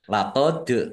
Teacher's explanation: dal sukun bacaan qalqalah dibaca memantul ditampakkan pantulannya